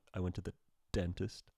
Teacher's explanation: There's a pause there. There's a stop. There's silence. And then it bursts forth with a D sound. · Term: stop sound